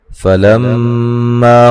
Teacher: فلما میم مشدد پہ غنہ ضروری ہے